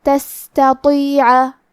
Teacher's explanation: یہاں حرف تا ہے اور اس کے بعد تو ہے. تا حروف الترقیق میں سے ہے تو ہمیں تا کو پتلی آواز میں پڑھنا ہے، اور تو حروف التفخیم میں سے ہے لہذا ہم حرف الطو کو بھاری آواز میں اور منہ پھلا کے پڑھیں گے